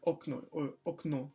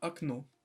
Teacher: considering that the accent is going to fall on the last vowel, the first one is going to be pronounced just like an A, so it's going to be akno.